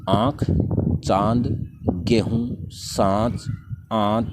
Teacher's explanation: यहाँ पर कंठ और नासिका दोनों से बाहर निकलती है, उन्हें अनुनासिक वर्ण कहते हैं। इनका प्रयोग भी अनुस्वार के समान स्वरों के साथ ही किया जाता है।